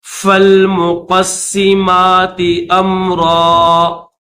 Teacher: اس قاف کو سین کے ساتھ ملائیں گے، سین کے اوپر تشدید بھی ہے اور نیچے زیر ہے، تو تشدید کی وجہ سے اس قاف کو سین کے ساتھ ملا کر پڑھیں گے